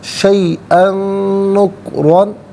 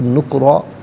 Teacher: را پر 2 زبر کی تنوین، اسے پر کر کے پڑھا جائے گا، وقف کریں گے تو 2 زبر کی تنوین الف سے چینج ہوگی تو اس وقت بھی جو ہے وہ را کو پر کر کے پڑھا جائے گا۔